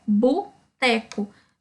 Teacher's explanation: Então, substituiu o O aí pelo U, certo?